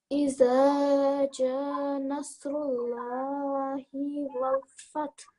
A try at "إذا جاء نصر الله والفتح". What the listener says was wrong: Yep. So you missed out this hamza. So إذا جاء نصر الله والفتح.